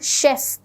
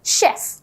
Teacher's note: මේක CH කියලා තිබ්බට අපි හරියට මේක ප්‍රොනවුන්ස් කරන්නේ sh sound. ඒ කියන්නේ ඒගොල්ලන් කියනෝනේ chef.